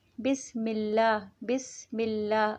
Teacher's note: ہم بسم اللہ پڑھتے ہیں، بسم اللہ، بسم اللہ. اس میں اللہ کا لفظ آتا ہے تو اس کا جو لام ہے وہ باریک پڑھا جاتا ہے، ہمیشہ باریک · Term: ترقیق لام